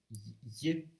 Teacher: the Irish y has more friction than the English y. So basically, the Irish, the tongue is higher, it's raised to the palate, so it's a palatal fricative, whereas in English it's a palatal approximant.